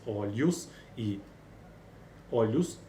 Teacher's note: Tem na última sílaba uma consoante lateral, o ar passa pela lateral, alveolar ou dental, seguida de uma dental, né?